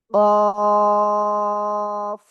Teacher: জিহ্বার গোড়া, তার বরাবর উপরে তালুর সাথে লাগিয়ে 2 নোক্তাওয়ালা কফ।